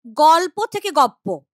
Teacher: এই পটার প্রভাবে এই ল টা হয়ে যাচ্ছে প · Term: পরাগত সমীভবন